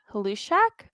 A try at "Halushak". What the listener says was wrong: I believe they want to say Lushak. The H is Lushak. The H is silent.